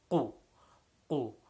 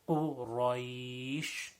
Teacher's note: So Qaf should have that pop sound. The back of the tongue raises up and touches the top right before the tonsils. And then you make a pop sound.